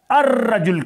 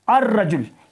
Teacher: تو آپ کو اس لفظ کو الف لام کی بجائے آپ کو الرجل کہنا ہے. الرجل, یہاں لام کو آپ نے غائب کر دینا ہے. آپ کے تلفظ میں لام نہیں آئے گا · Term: شمسی